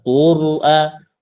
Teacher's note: Qur'a itu huruf ro sukun sebelumnya dhammah, ya kan dibaca tebal.